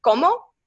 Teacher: the pure o is uh not found in in english usually you can find it in spanish with como